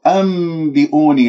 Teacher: أنبئوني، لاحظتم كيف أنا الآن النون الباء قلبت إلى ميم لأنه هذا حرف الإقلاب الوحيد من غير كز. أنبئوني، الواو ساكنة قبلها همزة مضمومة، مد بدل بمقدار حركتين.